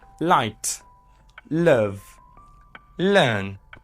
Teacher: l is a voiced alveolar lateral approximate · Manner of articulation, air flows around the sides of your tongue. Okay, and that makes it a lateral approximant.